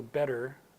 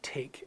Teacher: So better in British English is not aspirated the same way that take is, right?